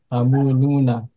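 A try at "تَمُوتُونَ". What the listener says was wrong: Kok temu Nuna? Kenapa jadi Nun? Tamu tuh huruf ta bukan tamu Nuna.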